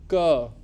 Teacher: So the back of your tongue touches the upper palate.